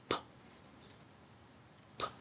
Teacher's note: notice how we stop the flow of air from our mouth and then let out a short puff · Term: the sound p